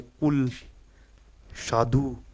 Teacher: तो आपको बताना है पस या पश्च जो जीवा का अंतिम भाग होता है कंठ की तरफ वहां से संवृत यानी बंद एकदम जब बोलते वक्त मुख लगभग बंद रहता है ह्रस्व है क्योंकि ये छोटा ऊ है वो वृत्त मुखी है मतलब बोलते वक्त क्या हमारा जो होठों का आकार है वो वृत्त के रूप में हो जाता है